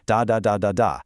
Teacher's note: where every syllable gets roughly the same amount of time, like a machine gun, da da da da da. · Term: syllable-timed languages